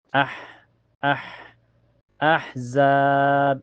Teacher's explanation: Selahnya ada ha sukun mutlak ya. Ha dan makhraj ha itu keluar dari tenggorokan. Ini sejar dengan ain.